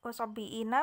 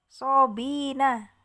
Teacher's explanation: sobiina menjadi sobina ya, bi-nya jadi pendek ya. Asalnya wasobiina menjadi wasobina man amana gitu ya, bihadfil hamzah, dengan membuang hamzah ya gitu.